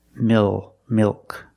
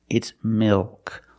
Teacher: it's not between vowels it's between a vowel and a consonant the L is after a vowel but before a consonant this is also a dark L mil milk it's not milk it's milk the tongue gets fatter · also a dark L mil milk it's not milk it's milk the tongue gets fatter at the bottom it expands and it goes up a little bit in the back